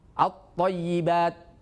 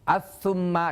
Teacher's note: dalam ini adalah sebagian daripada huruf Syamsiah huruf yang di mana ketika ada alif lam bertemu dengan huruf Syamsiah ini Alif lamnya tidak terbaca